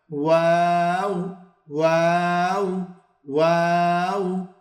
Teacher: ওয়াও হরফটি 2 ঠোঁট গোল করিয়া উচ্চারণ করতে হয়।